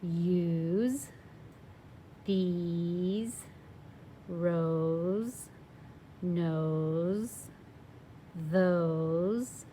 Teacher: They all have a vowel and then the S and then the silent E. And when our S is in between two vowels, it's going to sound like that Z sound